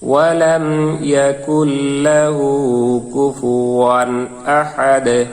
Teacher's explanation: এখানে যখন আমরা ওয়াকফ করব তখন এই দালের দুই পেশ থাকবে না, দালটি সাকিন হয়ে যাবে এবং কলকলা উচ্চারিত হবে।